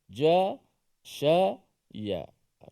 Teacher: Di tengah lidah dikacipkan atau diterangkat bila kita menyebut huruf shin itu. Dan di antara tempat tengah lidah juga ada huruf jim dan ada huruf ya.